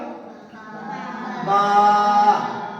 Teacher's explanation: বা অক্ষরটা এক আলিফ টান হবে, উচ্চারণ হবে দুই ঠোঁট থেকে।